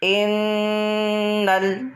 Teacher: یہاں پر غنہ کرنا ہے، انل نہیں پڑھنا، نون کے اوپر تشدید ہے تو حمزہ کو نون سے ملانا ہے اور اس میں ایک الف کی مقدار غنہ کرنا ہے